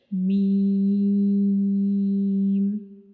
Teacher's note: ठीक है, मीम को पढ़ते हुए मीम का मखरिज क्या है कि हमारे जो होंठ हैं इनका खुश्क वाला हिस्सा, जो ऊपर वाले होंठ और नीचे वाला होंठ जो है, इन दोनों का जो खुश्क वाला हिस्सा है वो दोनों एक दूसरे को टच करेंगे तो मीम अदा होगा